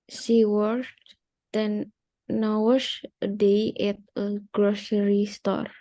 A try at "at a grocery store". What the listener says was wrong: At a grocery store-nya masih belum nyambung. At a grocery store. At